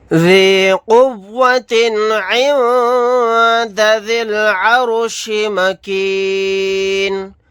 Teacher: نون ساکن کے بعد دال ہے، یہاں پر اخفا کا قاعدہ ہوگا۔ رائے ساکنہ کو موٹا یعنی پر پڑھیں گے کیونکہ اس سے پہلے زبر ہے، نون کو ساکن بنا کر پڑھیں گے آیت کرنے کی صورت میں۔